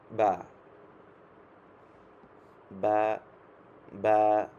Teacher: বা হচ্ছে যে আমরা বা দুইটা ঠোঁট একসাথে লাগাবেন, লাগিয়ে হচ্ছে এই বা, বা, বা, বা, বা, জি, বা, এরকম আপনারা দেখেন বা, দুই ঠোঁট একত্র করে বা, বা, বা, আলিফ, বা, বা।